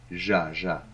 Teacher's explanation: se prononce un peu comme quand tu dis jazz, le jazz. Mais il n'y a pas le D devant.